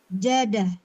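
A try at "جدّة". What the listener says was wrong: Aywa. Jaddah bitasdid yani. Lazim tasdid. Jaddah.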